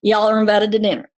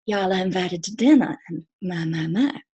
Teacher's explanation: you get those hard R's in the mountains